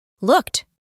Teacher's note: Como hicimos anteriormente, la doble O se reemplaza por U, y la ed del final tiene la pronunciación de una T